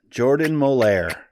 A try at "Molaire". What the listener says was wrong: That's not how you pronounce my name. It's not French. Molar